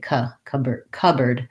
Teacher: So this board gets reduced to a bird, just an sound, actually just like the word bird. And we don't say the P of cup. So we say cupboard, with first syllable stress.